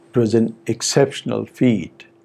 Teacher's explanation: we have a very long pre-head in the sentence